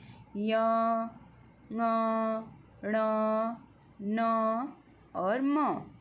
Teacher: ये सारे कहाँ से उच्चारित होते हैं, नाक से उच्चारित होने वाले वर्ण हैं, इसलिए इनको नासिक्य वर्ण कहा जाता है